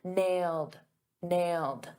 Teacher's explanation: in the past simple that ed d is a very soft d.